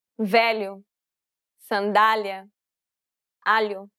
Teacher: It sounds a bit like you're trying to say an L and a Y sound at the same time. Try to think of it as pronouncing an English L, but instead of using the tip of the tongue, try using the middle part of the tongue to approach the roof of your mouth.